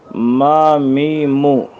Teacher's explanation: میم مد کے ساتھ اس کا نام ہے، اس کی ادا باعتبار مخرج میم زبر ما، میم زیر می، میم پیش مو، ما می مو۔ دونوں ہونٹوں کی خشکی کے ملنے سے یہ حرف ادا ہوتا ہے